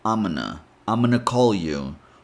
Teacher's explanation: Then, if you say things a bit faster, you can eliminate the G sound in gonna and connect the M sound to onna. So, you get amana.